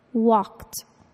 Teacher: The ed verb ending sounds like a t, walked, even though it ends in the letter d.